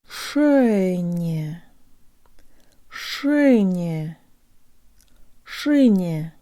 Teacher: the soft N, which sounds like it has a Y built into it, and the last ye sounds like a schwa.